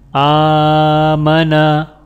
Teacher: اب یہاں پر صرف حمزہ کے اوپر کھڑی زبر ہے، تو لہٰذا حمزہ کو ایک الف کے برابر یعنی 1 سیکنڈ کھینچ کر پڑھا جائے گا، جبکہ میم اور نون کے اوپر صرف زبر ہے تو ان دونوں لفظوں کو بنا کھینچے پڑھا جائے گا۔ آمنا، حمزہ کھڑا زبر آ، واو کھڑا زبر وا، آوا۔